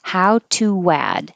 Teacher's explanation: when you say to, your lips should get small and then come back and it will make a W